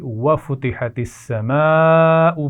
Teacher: بڑی مد ہے، اس کو خوب کھینچ کر پڑھا جائے گا، اور اس کے بعد حمزہ کو واضح کیجیے